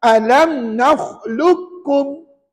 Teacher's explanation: Huruf qaf jangan baca sebab dah masuk ke dalam huruf kaf. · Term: idgham mutaqariban